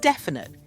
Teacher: that middle vowel sound is unstressed so it's easy to miss